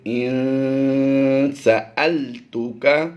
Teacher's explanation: یہاں پر حمزہ نون زیر ان میں غنہ نہیں ہوتا